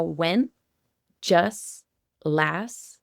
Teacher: We're not actually saying the T at the very end.